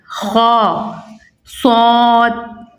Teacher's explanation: انہیں ہر حالت میں پوری یعنی موٹا پڑھیں گے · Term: حروف مستعلیہ